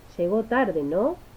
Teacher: la curva entonacional se mantiene recta, pero en la partícula final suele presentar un pico ascendente para luego descender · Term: índices interrogativos